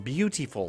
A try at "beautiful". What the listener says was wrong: it's an interesting pronunciation of beautiful, but sure. extra syllabifying it.